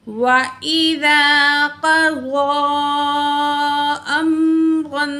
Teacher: تو یہاں مد منفصل ہے، اس لیے ہم یہاں 3 الف کے برابر کھینچ کے پڑھیں گے. قاف کو بھی موٹا پڑھیں گے، ضاد کو بھی موٹا پڑھیں گے.